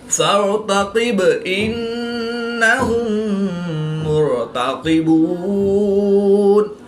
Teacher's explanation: نون مشدد میں ہمیشہ غنہ ہوتا ہے تو یہاں پر ہم غنہ آنی کر کے پڑھیں گے۔ میم ساکن کے بعد دوسری میم ہے تو یہاں پر ادغام شفوی ہوگا یعنی غنہ کر کے پڑھیں گے۔ را ساکن سے پہلے پیش ہے تو را کو پوری یعنی موٹا پڑھیں گے۔ · با حروف قلقلہ میں سے ہے اور جب حروف قلقلہ ساکن ہو تو ان میں قلقلہ خوب ظاہر ہوگا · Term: قلقلہ صغریٰ